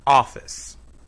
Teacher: In words with 2 or more syllables, one syllable is stressed. In office, the first syllable is stressed.